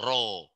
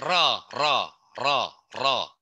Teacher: Ngucapinnya tuh antara A dengan O.